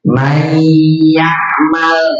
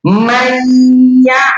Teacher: Ketika hukum nun sukun, huruf nun sukun atau tanwin itu dia bertemu dengan 4 huruf idgham di gunnah di sini, maka dibacanya itu harus disertai dengan dengung